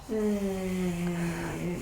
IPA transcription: δ